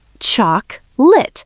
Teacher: In America, if you say choc-o-late, people will think you're a robot. It's two syllables, choc-lit.